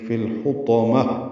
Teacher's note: ہا وسط حلق سے ادا کریں گے، تو پر پڑھیں گے، میم کو تائے مربوطہ سے ملا دیں گے، وقفاً یہ ہا میں تبدیل ہو جائے گی · آئے گا، فا کو لام سے ملانا ہے، اظہار قمری ہے، ہا وسط حلق سے ادا کریں گے